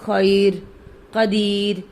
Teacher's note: اب یہ نہیں کہیں گے خیر قدیر، یا ساکن ہے، وقف والی را یا ساکنہ کی وجہ سے باریک پڑھی جائے گی